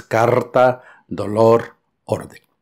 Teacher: pequeña vibración que la r tiene en el español